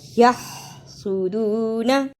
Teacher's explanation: یحسدون، ہا کی صحیح آواز نکالنا، ہا کو نکالنے کا طریقہ حلق سے آواز کو رگڑ کر نکالنا